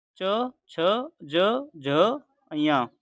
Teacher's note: जिन वर्णों का उच्चारण करते समय जीभ का मध्य भाग हमारे तालु को स्पर्श करता है, उन्हें तालव्य व्यंजन कहते हैं। इन्हें स्पर्श संघर्षी व्यंजन के नाम से भी जाना जाता है।